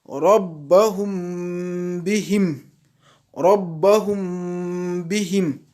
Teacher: c'est qu'on pose les lèvres sans appuyer, en faisant une nasalisation, c'est-à-dire une ghunna de deux temps. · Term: al-ikhfa